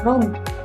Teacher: Namun secara fonemik keduanya berbeda. Tetapi pada posisi final G sering tidak terdengar berbeda dari K. Bahkan keduanya bisa diucapkan sebagai huruf K sendiri. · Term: netralisasi